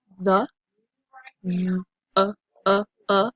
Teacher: that e has that schwa sound